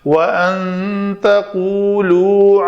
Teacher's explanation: نون ساکن کے بعد تا حروف اخفا میں سے ہے تو یہاں پہ اخفا ہوگا